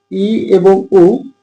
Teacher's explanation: ই এবং উ, এটা যেহেতু জিভটা উপরের দিকে যাচ্ছে এজন্য আমরা এটাকে বলতে পারি উচ্চ স্বরধ্বনি